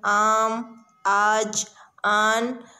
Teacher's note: الف مد آ، جسے الف ممدودہ کہتے ہیں، اس کی آواز الف کی آواز سے لمبی ہوتی ہے